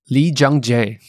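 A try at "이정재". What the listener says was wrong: Dad, that sounds so racist. That sounds so racist. Lee Jung-jae. Why you gotta say it like that, bro? Whoa, what's with the hard J's, bro? Lee Jung-jae. You're like, Lee Jung-jae.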